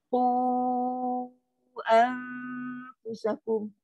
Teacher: Kita kena baca panjang lebih dari 2 harakat.